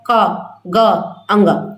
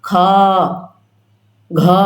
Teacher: जिसको बोलने में कम समय लगता है क ग अंग कम समय लगा लेकिन ख को बोलने में ज्यादा समय लग रहा है ख घ बोलने में टाइम है तो वो किसम चला जाएगा